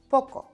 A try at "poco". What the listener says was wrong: Try again, but more gentle, like the P is shy. Softer actually sounds more confident.